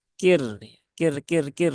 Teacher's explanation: rnya didahului harakat kasrah pada huruf Kaf Nah maka r-nya ini terbaca dengan tipis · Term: ro yang tipis